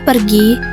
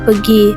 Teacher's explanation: Kata pergi biasa terucap menjadi pegi. Kesalahannya, penghilangan fonem R dalam pengucapan.